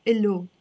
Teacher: we don't really pronounce the H in Lebanese. We pronounce it just as a O.